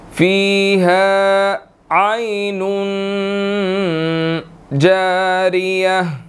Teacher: اب یہاں پر دیکھیں کہ فیہا ہا کے بعد الف مدہ ہے، 1 سیکنڈ کھینچیں گے